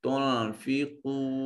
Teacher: قاف صفت استعلاء ہونے کی وجہ سے اس کو مفخم ادا کیا جائے گا۔ · نون ساکن کے بعد فا حرف اخفا ہے، نون کو اپنے مخرج میں چھپا کر پڑھیے